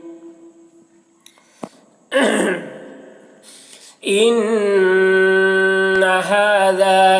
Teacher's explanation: نون مشدد ہے، نون میں غنہ ہوگا